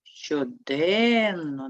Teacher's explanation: щоденно наголос падає на другий склад